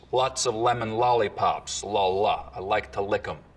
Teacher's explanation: most other New York accents have pretty dark L's